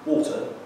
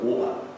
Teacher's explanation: The glottal stop is when you drop the T and just go water.